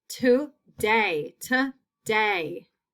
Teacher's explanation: makes it a second syllable word we have today today today that long a is in the second syllable